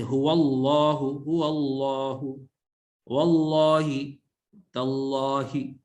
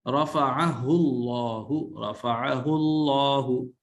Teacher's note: جب زبر آ جائے یا پیش آ جائے اللہ کے نام سے پہلے تو پھر ہم اسے موٹا پڑھیں گے، اور اگر زیر آ جائے تو باریک پڑھیں گے۔